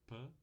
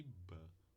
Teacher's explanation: temos duas oclusivas bilabiais Pan e ban uma surda uma sonora